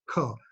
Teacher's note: Ka gets generated from the guttural, so the inside of the throat